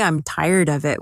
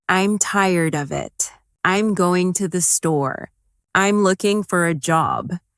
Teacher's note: Instead of I'm tired of it, they might say I'm tired of it with of sounding almost like uh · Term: weak forms